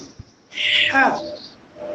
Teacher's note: হা হরফটা হবে কণ্ঠনালী কিংবা হালকের মধ্যখান থেকে। এই মধ্যখান থেকে আসবে কি হা।